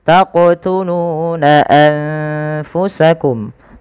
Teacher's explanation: Qalqalah adalah bacaan memantul. Jadi ketika melafalkan huruf qof itu ketika sukun dipantulkan.